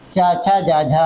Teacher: तो तालू से उच्चारित होने वाली ध्वनि कौन सी है चा छ जा जा है